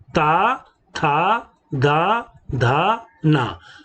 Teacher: हम इसका उच्चारण दंत से करते हैं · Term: तवर्ग